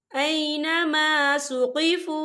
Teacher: ये देखिए ऐनमा सुक़िफ़ू, यहाँ पे वाव मद्दा हो रहा है, वाव साकिन है, वाव साकिन से पहले पेश है और इस पर मद भी है, तो हम इसे 4 हरकत के बराबर खींच के पढ़ेंगे